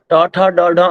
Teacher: ट ठ ड ढ अण ये सारे अक्षर मूर्धा से ही उच्चारित होते हैं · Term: मूर्धा स्थान